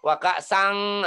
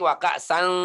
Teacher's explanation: sannya dibunyikan panjang, terus hampir bunyi seperti ang, hampir, tapi belum bunyi ang